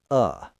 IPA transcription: ə